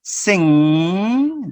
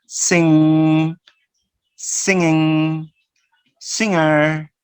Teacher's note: there is usually no G sound in words like sing.